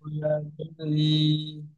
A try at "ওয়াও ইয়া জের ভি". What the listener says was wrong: ওয়াও ইয়া জের ই নয়, ওয়াও ইয়া জের ভি। হালকা বায়ের মতো হবে, ভি।